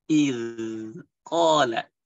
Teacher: Ada sedikit z-nya, tapi itu tipis karena ketahan sama gigi kita.